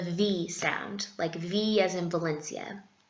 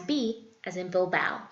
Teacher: here in Madrid, I've noticed that V as in Valencia is said the exact same way as B as in Bilbao